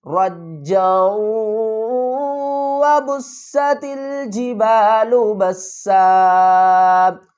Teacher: واو مشدد ہے تو ہم کیا کریں گے، جیم کے اوپر سختی کریں گے اور جیم کو واو سے بھی ملا دیں گے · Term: ادغام